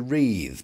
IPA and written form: riːð (wreathe)